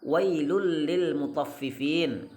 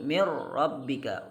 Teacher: dan idghamkanlah dengan tanpa menggunakan, memberikan dengung pada 2 huruf yaitu lam dan ra. Contoh wailul lil mutaffifin, huruf lam.